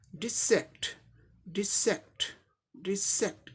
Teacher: Second पे stress mark है, इसे जोर से बोलना है थोड़ा, डिसेक्ट डिसेक्ट डिसेक्ट, इस पे स्ट्रेस देके बोलना है, डिसेक्ट।